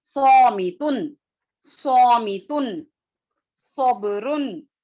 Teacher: ٹھیک ہے, اب یہاں پر صاد کی طرف چلتے ہیں. صاد جو ہے سیٹی کی آواز آئے گی